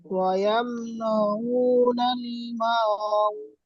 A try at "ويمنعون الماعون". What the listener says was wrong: আপনার ওই মা পড়লেন, তারপর আর শোনা গেল না।